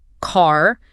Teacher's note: Received pronunciation or RP is often used as a standard, though fewer people actually speak pure RP now, but it's typically non-erotic, meaning the R at the end of words or before a consonant often gets dropped or softened. So car sounds more like C.